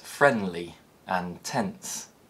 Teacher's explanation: when the t and d sounds appear between consonant sounds they're usually omitted to make words easier to pronounce in connected speech so words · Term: elided form